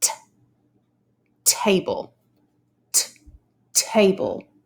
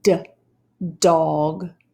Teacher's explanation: new sound the sound like dog made by the letter d the sound is a lot like the t sound but your throat vibrates when you say